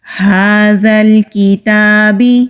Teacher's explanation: ہا حروف ہلکی ہے، حلق کا جو سینے کی طرف والا حصہ ہے وہاں سے یہ ہا ادا ہوگا۔ ہا کے اوپر کھڑی زبر ہے، ایک الف کے برابر کھینچ کر پڑھیں گے۔